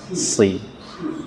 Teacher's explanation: Bukan shi tapi sri, ujung lidah.